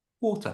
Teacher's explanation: That R at the end in English is pronounced with that little uh schwa sound. So, water becomes water.